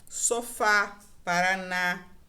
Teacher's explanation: percebo que a tônica é sempre a última sílaba